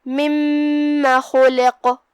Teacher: کلمت مما یہاں میم پہ تشدید ہے تو ہم دو حرف کے برابر میم کو پڑھیں گے، لیکن دھیان رہے ہم اپنی آواز لمبی نہیں کرتے تاکہ مد الف نہ ظاہر ہو